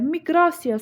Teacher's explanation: Miqrasiya sözündə vurğu ikidədir. İyə vurğu qəbul etmədiyi üçün.